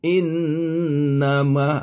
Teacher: wajibul gunah kena dengung dua harakat jadi innama ingat macam Apa itu bergelombang sikit in nak Buatkan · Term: wajibul gunnah